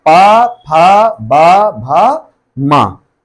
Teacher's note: अब और बाहर आओगे, लास्ट वाला ओष्ठ, जो वर्ड हम बोलेंगे वो ओंठ के जरिए बोलेंगे, ओंठ टच होंगे